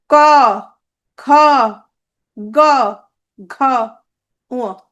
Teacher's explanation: এগুলোকে বলে কণ্ঠধ্বনি। উচ্চারণ স্থান হচ্ছে কণ্ঠ।